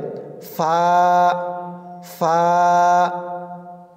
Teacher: আপনি যখন ফা উচ্চারণ করবেন তখন উপরের দুই দাঁত নিচের ঠোঁটের পেটে লাগবে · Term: ফার মাখরাজ